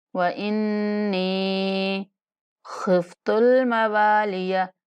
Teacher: اس کے بعد واو کے بعد الف مدہ ہے، واو کو ایک الف کے برابر لمبا کر کے پڑھیں گے